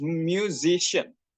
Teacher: the suffix attract stress to the preceding syllable, changing the original stress pattern of music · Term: stress attracting suffixes